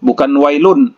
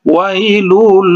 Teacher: cara membacanya itu langsung dimasukkan saja, jangan didengungkan. Wailul, wailul, bukan wailun, bukan atau jangan didengungkan, wailul, salah itu Jadi langsung dimasukkan saja. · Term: idgham bila gunnah